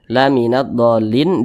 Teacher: Nah, cara bacanya diidghamkan. Karena huruf lamnya ini dia tidak dibaca langsung masuk ke huruf dotnya ini begitu. Kemudian laminat dolin, do ini adalah mad lazim mutsaqqal kalimi, atau biasa disebut juga dengan mad lazim kalimi mutsaqqal. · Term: idgham syamsiyah